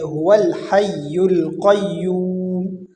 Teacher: واو کو ڈائریکٹ لام کے ساتھ ملیں گے، ہول ہو جائے گا، یہ هو الحی القیوم۔